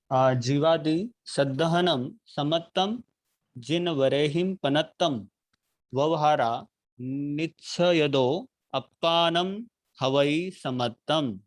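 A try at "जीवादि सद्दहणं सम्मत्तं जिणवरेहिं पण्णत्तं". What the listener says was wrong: एक मिनट थोड़ा सा आपका उच्चारण आपने शुद्ध पढ़ा, पर थोड़ा सा आप इतना ध्यान रखिए कि जब हम जहाँ द्वित्व आता है वहां पे उसी रूप में बोला, जैसे जीवादि सद्दहनम सम्मत्तम।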